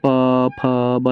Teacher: इनका उच्चारण स्थान ओष्ठ है, अर्थात ओठों की सहायता से इनका उच्चारण होता है। बोल के देखेंगे जैसे प फ ब, सब में ओठ का इस्तेमाल हो रहा है ना, यही कारण है कि इनको हम ओष्ठ कहते हैं, इन वर्णों को ओष्ठ कहा जाता है।